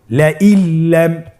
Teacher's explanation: নুন সাকিনকে আমাদেরকে পরবর্তী হরফের সাথে মিলিয়ে গুণা ছাড়া পড়তে হবে